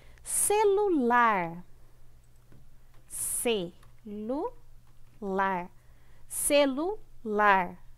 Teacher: A sílaba mais forte é o lar. Então, é uma oxítona.